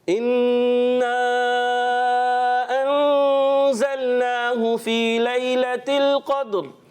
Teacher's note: 2 غنّے ہیں، ایک نون مشدد میں اور پھر انزلناہ، اور مد کو بھی کھینچنا ہے. 2 غنّے کر کے جائیں گے تو انشاءاللہ صحیح ہو جائے گا.